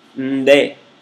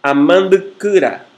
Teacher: Às vezes o N muda-se em ND, que é seu alofone. Em ND também temos uma consonante nasal oralizada. Começa como nasal e termina como oral.